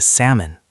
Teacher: That is a very common reading mistake because the L is written but not pronounced. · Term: the silent L